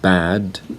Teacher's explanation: The last sound of the word bad is an alveolar sound.